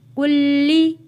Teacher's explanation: سختی کے ساتھ تھوڑا رک کر پڑھیں گے، تشدید والے حرف کو، لام کے اوپر تشدید ہے ، کلی، ذال میم زبر ذن، چھوٹی میم ہو، ہم نے